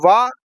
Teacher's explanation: ये दंतोष्ठ होता है, दांतों और ओष्ठ दोनों से बोला जाता है, ये भी सघोष होता है, अल्प प्राण होता है, अर्धस्वर होता है।